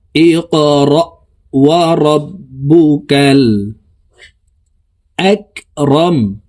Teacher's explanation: কফ কলকলার হরফ, উপরের দিকে ধাবিত করে ধাক্কা দিয়ে উচ্চারণ করব